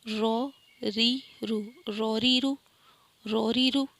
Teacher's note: رو زبر آ گیا ہے تو رو موٹا، ری زیر آ گیا ہے تو باریک، رو پہ پھر پیش آ گیا تو رو موٹا